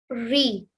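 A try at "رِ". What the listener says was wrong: Try not to roll your R's again.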